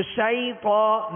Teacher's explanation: بغیر کھینچے، بغیر جھٹکا دیے، نرمی کے ساتھ معروف پڑھیں گے. حروف لین کو، یعنی ان 2 حروف کو جب یہ لین ہو، واو ساکن سے پہلے زبر، یا ساکن سے پہلے زبر ہو، تو اس کی ادائیگی کا طریقہ یہ ہوگا کہ بغیر کھینچے، بغیر جھٹکا دیے، نرمی کے ساتھ معروف پڑھیں گے. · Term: یا لین